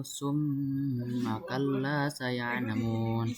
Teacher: terdapat mim bertasdid dan cara membacanya dengan dengung serta ditahan selama tiga harakat. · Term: gunah, gunnah